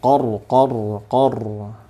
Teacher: qornin ro sukun sebelumnya fathah itu tebal